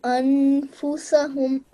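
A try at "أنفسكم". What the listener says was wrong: It's a kum, darling. The kaf here. Yeah?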